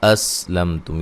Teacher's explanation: یہاں دونوں حمزوں کو تحقیق کے ساتھ پڑھیں گے، یعنی کہ واضح پڑھیں گے، نرم نہیں کرنا کسی کو بھی. · سین کو باریک سیٹی سے ادا کرنا ہے. میم ساکن کا اظہار ہے، غنہ نہیں کریں گے. · میم ساکن کا اظہار ہے، غنہ نہیں کریں گے. یہاں بھی میم ساکن کا اظہار ہوگا ملانے کی صورت میں.